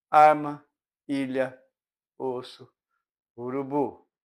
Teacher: a corrente de ar encontra o véu palatino elevado e sai principalmente pela boca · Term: orais